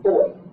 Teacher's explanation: when you close your mouth for that B, no air escapes. So that's a stop.